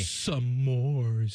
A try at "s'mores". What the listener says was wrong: You're putting it another SYLLABLE IN IT